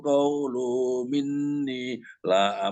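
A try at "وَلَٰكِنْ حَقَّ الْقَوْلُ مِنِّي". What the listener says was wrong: Lambat nyambung nih, qaulunya, lunya kepanjangan. Walakin haqqal qawlu minni.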